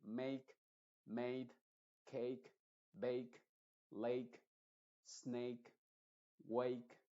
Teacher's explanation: o sea la a la d y la e al final normalmente esa a se va a pronunciar como e